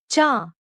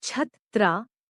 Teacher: With no approximate sound in English, its articulation can be described like pronouncing the cha in the word chair, but with a vigorous push of air.